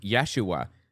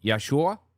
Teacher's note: the a is kind of dropped off or left hanging